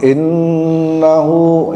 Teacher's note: hunya agak panjang dua harakat